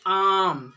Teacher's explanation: आम का आ जो है बहुत अपेक्षाकृत अ से ज़्यादा समय ले लेता है, इसीलिए इसे आम अगर आप लिखें आम, तो आम का आ जो है थोड़ा अधिक समय लेता है अपेक्षा। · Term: दीर्घ स्वर